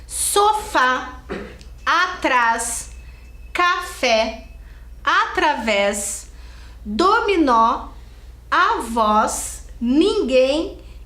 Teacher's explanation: todas elas a sílaba tônica a sílaba mais forte que está acentuada está por último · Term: oxítonas